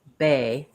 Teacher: if I say bay, I feel maybe a tiny bit of air come out